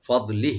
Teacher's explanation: ফদলিহি, এখানে আমরা থেমে যাব, এতে থেমের অপশন আছে এখানে, জরুরি বা জরুরি বিতে আমরা থামার এখানে ওয়াকফ করার নির্দেশ আছে। ফদলিহ, যখন আমরা থামবো, ফদলিহ লাস্টে হাটা সাকিন হয়ে যাবে।